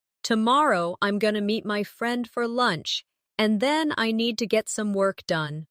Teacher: Stress tomorrow meet friend lunch and work. The other words should be softer and faster. Do you hear how it flows? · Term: natural rhythm of English